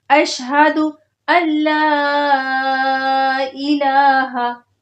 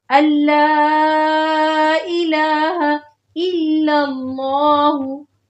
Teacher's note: جو بیچ میں نون ساکن آ رہا ہے وہ نہیں پڑھا جائے گا۔ اس کی وجہ یہ ہے کہ جب ساکن ورڈ کے بعد اگلا ورڈ جس پہ تشدید ہوتی ہے وہ آ جاتا ہے تو بیچ میں جو ساکن ہوتا ہے وہ نہیں پڑھا جاتا۔